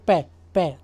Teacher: हमारे दोनों होंठ आपस में टकराएंगे